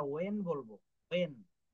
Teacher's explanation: ডাব্লিউএইচ এর উচ্চারণ হ না হয়ে ওয়া হবে, ওয়া, ও অন্তিস্ত একার, ওয়া।